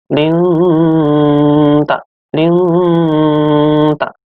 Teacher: Bacaan ikhfa, artinya samar-samar. Di sini ada nun mati bertemu dengan huruf ikhfa, yaitu ta. Artinya seakan-akan nanti mau masuk ke huruf ta.